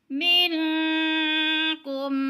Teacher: نون ساکن کے بعد کاف حروف اخفا میں سے ہے تو اخفا کریں گے، یعنی آواز کو ناک میں لے جائیں گے، چھپا کر پڑھیں گے۔